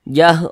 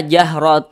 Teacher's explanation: Hakiki nah kemudian Dia tergolong kepada Ikfa Hakiki ausat Nah jadi cara bacanya itu disamarkan kemudian didengungkan jadi antara samar dan dengung karena dia ausat itu seimbang antara samar dan dengung jadi antara